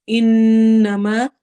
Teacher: انما نون پر ہم غنہ کریں گے اور ما میں الف مدہ ہے تو اس کو 2 حرکہ لمبا کرنا ہے۔